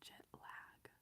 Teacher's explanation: I just pronounced the AG as EG instead.